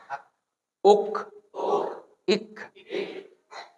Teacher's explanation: Maksudnya, antum berhenti, fokus suaranya berhenti, nanti keluar anginnya sedikit. Antara angin sama putus suara, lebih kuatan putus suara. Tapi karena putus suara ini baik, jadi masih disisain untuk si angin. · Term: huruf kaf